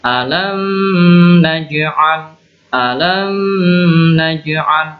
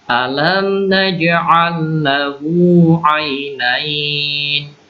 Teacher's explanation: Mim sukun yang bertemu nun selanjutnya. Maka ini idhar mimnya, jelas, ya. Jadi alam naj'al, jangan didengungkan.